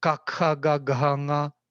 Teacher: the back tongue touching the soft palate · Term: first row